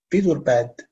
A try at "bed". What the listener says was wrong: No, it's bed. Bed. You pronounce it as bead? No, it's not bead. It's wrong. It's bed. The correct pronunciation is bed. I'm going to bed.